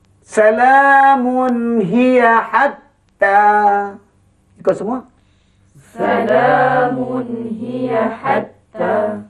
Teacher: Artinya hendaklah dibaca dengan izhar, nyata terang tanpa dengung. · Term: izhar halqi